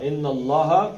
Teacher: نون کو زبان تالو سے لگا کے 2 حرکتیں، ان اللہ، اب یہ پیچھے زبر ہے تو اللہ کا لام موٹا